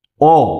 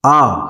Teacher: যখন বলছি অ, অ যতটা সময় উচ্চারণ করছি, আ তার থেকে বেশি সময় উচ্চারণ করছি। কেমন? অর্থাৎ অ কম সময় উচ্চারণ করছি, সেজন্য অ হচ্ছে হ্রস্ব স্বর।